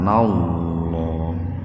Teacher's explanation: Lafdul jalalah atau lebih spesifiknya huruf lam didahului fathah maka dibacanya itu tebal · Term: tafhim